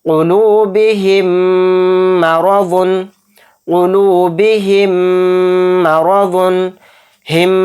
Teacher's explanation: नाक में गुन्ना करेंगे, आवाज़ को रोक कर चलेंगे।